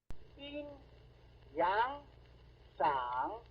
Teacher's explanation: the rising slope begins or initiates right at the beginning of the vowel and this early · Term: mid-rising